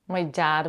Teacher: do you notice how my is shorter than dad